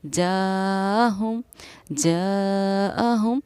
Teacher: جاءہم، جاءہم، اس حروف مدہ ہے جیم الف پر، اور یہاں حمزہ اسی الفاظ میں ہے، تو اس حروف مدہ کو ہم کہتے ہیں مد متصل مد، واجب بامانی اہم۔ پڑھنے کا طریقہ اس کو یہ ہے کہ اس کو 4 الف کے برابر کھینچ کر ہم پڑھتے ہیں۔